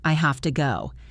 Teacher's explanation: Have to becomes hafta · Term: reductions